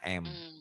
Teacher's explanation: bunyi nun matinya berubah menjadi mim mati. Asalnya kan nun mati atau tanwin itu kan nun mati atau tanwin itu kan bunyinya n. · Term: Iklab